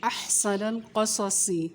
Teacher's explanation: حا کی آواز حلق سے, سین کی آواز باریک ہوگی, قاف کی موٹی, قاف صاد کو ہمیشہ ہر حال میں موٹا ہی پڑھا جاتا ہے.